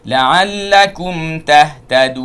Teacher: La'allakum jangan banyak tak perlu, kerana ha makhrajnya hanya pada akhir halqum sahaja